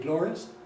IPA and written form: ˡglɒriəs (glorious)